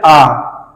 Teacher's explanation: मुख पूरा का पूरा खुला है, आ पूरा मुख खुल गया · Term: विवृत